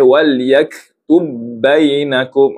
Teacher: Kerana sebenarnya di sini tidak ada huruf ba. Huruf ba yang sukun ni telah dimasukkan ke dalam ba yang kedua. Maka di sini ba yang pertama ni tidak boleh kita lantunkan sebab memang tidak ada.